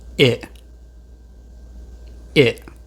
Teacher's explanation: Although the first letter is an E, it actually sounds more like a short I.